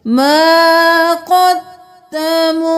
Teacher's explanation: الف مدہ ہے ایک الف کے برابر کھینچیے